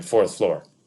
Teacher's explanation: middle class speech was more likely to pronounce the R in fourth floor